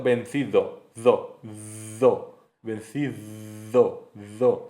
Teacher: es interdental porque el aire sale con fricción, fricativo entre los dientes